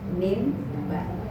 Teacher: Karena mim dengan ba itu sama-sama syafatain di bibir.